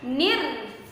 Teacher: alif lamnya tidak terbaca, dinamakan alif lam syamsiyah